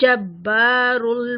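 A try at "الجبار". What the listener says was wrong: हाँ जी, लाम को बारीक, जब्बारुल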